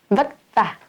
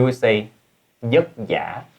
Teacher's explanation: many Southerners say va as yeah